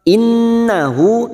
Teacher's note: nun yang bertasdid gunna musaddadah. Kita dengungkan dan ditahan selama 3 harokat.